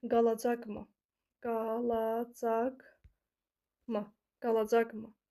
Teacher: Qalacaqmı sözünə ma, mim, mu vurğunu qəbul eləmir və özündən bir dənə əvvəlki hecaya vurğunu atmış olur